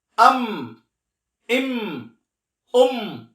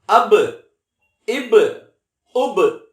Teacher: மீம் என்பது இரு உதடுகளுடைய காய்ந்த பகுதியில் இணைய வேண்டும் பா என்பது ஈரமான பகுதியில் இணைய வேண்டும்